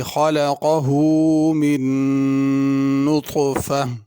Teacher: من کے نون پہ غنہ ہوگا اور نطفہ کا جو طا ہے وہ پر ہوگا، نطفہ تا کے ساتھ نہیں پڑھنا۔ اگر اس پہ رکنا ہو تو نطفہ پڑھیں گے ہا کے ساتھ، اور اگر ملا کے پڑھنا ہو تو پھر نطفتین پڑھیں گے۔